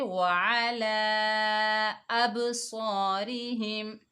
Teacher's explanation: دیکھیں مد منفصل چھوٹی مد ہے، اس کو 3 الف کی مقدار کھینچ کر پڑھیں گے، اور آگے حمزہ کو با کے ساتھ ملا کر پڑھیں گے۔ با حروف قلقلہ میں سے آ رہا ہے، ڈبل ساؤنڈ ہوگا